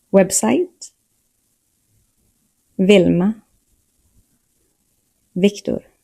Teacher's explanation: V and W sound the same in Swedish. Both are pronounced like the English V.